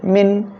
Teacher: নুন সাকিনের পরে ইদগামে বা গুন্নার অক্ষর নুন আসছে গুন্নার সাথে মিলিয়ে পড়তে হবে